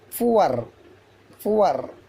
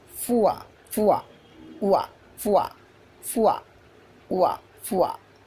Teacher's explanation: This is the fa sound, this is the o sound, this is the a sound, this is the ra sound. Generally, American people will pronounce R sound. British people won't pronounce R sound.